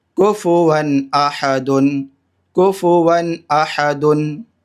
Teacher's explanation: کاف پیش کو، فا پیش فو، کفو، واو دو زبر ون، کفو ون۔ یہاں تنوین کے بعد حمزہ آ رہا ہے، ٹھیک، تو یہاں پر اظہار کریں گے